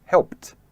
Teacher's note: the last consonant of the regular verb is unvoiced, and you pronounce the ed as t. For example, help ends with a p sound, which is unvoiced. · help ends with a p sound, which is unvoiced. So the ed is pronounced t. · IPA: /helpt/